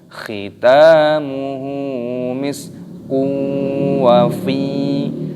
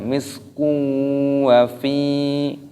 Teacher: ada dhammah tanwin yang bertemu dengan huruf wawu, ini hukumnya dibaca idgham bi gunnah. Idgham itu artinya memasukkan, bi gunnah berdengung. Jadi dimasukkan dan didengungkan. Misku wa fi, fa-nya panjang, ada ya sukun.